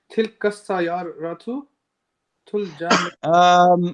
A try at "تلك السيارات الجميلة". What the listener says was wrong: You're putting an alif in front of the ra. You're saying sayyaratu a little bit. تلك السيارة سيارة. You have to give every letter its right, and that's a saying in tajweed. When you study the Quran and study the science of recitation, tajweed, they'll say tajweed literally means to give every letter its right.